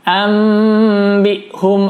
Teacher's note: Bunyi nun sukunnya berubah ditukar menjadi bunyi mim sukun.